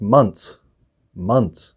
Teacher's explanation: we don't pronounce the th if we're just saying months · The word months, we don't pronounce the TH.